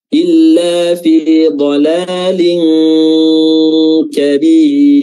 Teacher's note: Dan di akhir ayat ada huruf ra, di sini dia sukun dan sebelumnya ada kasrah, maka ra-nya di sini tarqiq atau tipis.